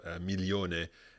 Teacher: a little bit like it's got a y in there, but it's just the L and the I together